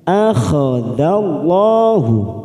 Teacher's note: ada lam jalalah yang sebelumnya berharokat fathah dha, maka kita baca tafkhim